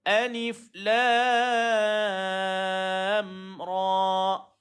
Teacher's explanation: Nampak? Jangan panjangkan ra sangat, jangan panjangkan alif pula, panjangkan lam.